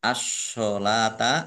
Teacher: ditandai shadnya ada tasdidnya shadnya dibaca dobel